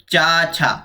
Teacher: जब चा छा पढ़ते हैं आप तो आपकी जो जिवा है वह तालू को टच करती है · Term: तालव्य वर्ण